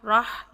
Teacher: را او کی ساؤنڈ لے کر آئیں گے، آ کی ساؤنڈ نہیں لے کر آئیں گے۔ موٹے حروف کی ساؤنڈ آ کی ساؤنڈ ہوتی ہے، تو را پڑھیں گے، نوٹ را۔ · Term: موٹا